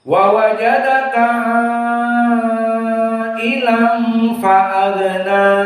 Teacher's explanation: Ilangnya 2 rakaat gunnah karena hukumnya ikhfa, makhrajnya dari khaisum.